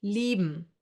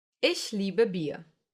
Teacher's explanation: I-E will be pronounced like a long, slow E, like for example in cheese.